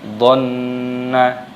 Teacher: Jadi dibaca dhanna, nunnya pendek tapi berdengung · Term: gunnah